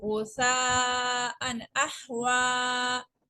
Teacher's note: غین پیش غو سا، علیمہ زبر سا، غوسا، حمزہ دو زبر ان، غوسا ان، حمزہ حا زبر اح، غوسا ان اح، واو کھڑا زبر وا، غوسا ان احوا، واقفاً غوسا ان احوا۔ یہاں پہ ہلکی لیٹر آ گیا ہے تنوین کے بعد، تو ہم نے اظہار کیا ہے، غنہ نہیں کیا